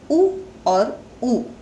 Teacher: ऋस्व और दीर्घ उ जो है वो स्वर तंत्र के चौथे भाग से यानी कि होठों की सहायता से बोले जाते हैं, इसलिए इनका उच्चारण है ओष्ठ।